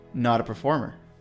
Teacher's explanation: the T from not turns into a flap T as it connects to a performer